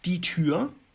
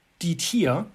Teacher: Right, again, this is a very rare instance, but this is a case where a change in the sound in Texas German, namely the unrounding of front rounded vowels, die Tür to die Tier, combined with the unclear gender assignment, die or das Tier, can then lead to these overlaps in meaning in certain contexts.